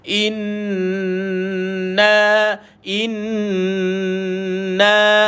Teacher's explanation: Hamzah bar baw I jumpa dengan Nun sabdu tekan dan lepaskan lama sikit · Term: wajibal gunah